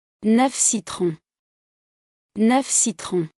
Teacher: Before a consonant, F is pronounced.